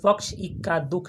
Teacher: पक्ष प पर जोर लगा रहे हैं, इक्का ई पर जोर लगा रहे हैं, दुख दू है ना, इस पर जोर लगा रहे हैं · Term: बलाघात